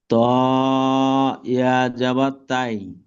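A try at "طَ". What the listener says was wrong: তাই হবে না তয় ত জাবার ত উচ্চারণ হয় আর তয় ইয়া জাবার তয়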